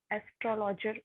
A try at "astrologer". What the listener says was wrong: Astrologers. Oh, you're stressing on the O. So say it like this: astrologer.